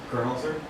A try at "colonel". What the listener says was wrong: I don't see an R in that. Do you see an R?